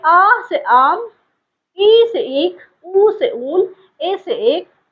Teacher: यहाँ पे हर्ष स्वर का 2 गुना समय दीर्घ स्वर में लगता है। दीर्घ का मतलब बड़ा, थोड़ा सा बड़ा होता है।